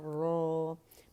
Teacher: پیچھے جڑ اٹھانی ہے را موٹا کرنے کے لیے